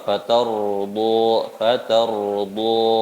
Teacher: ini ro sukun Kalau sebelumnya ada huruf berharokat fathah, maka sifatnya tetap tebal. Dan di depannya ada huruf dot juga huruf isti'la, huruf tebal.